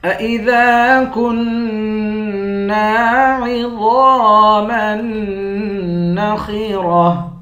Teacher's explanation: گولتا پر جب وقف کرتے ہیں گولتا ہاں بن جاتی ہے